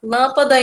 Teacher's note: embora o som seja nasal, né, digamos, não é um som aberto, né, é um som mais fechado, o acento muda, mas tá aí a palavra sendo acentuada.